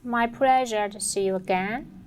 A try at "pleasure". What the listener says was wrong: Also, pleasure, mispronunciation with the L immediately noticeable.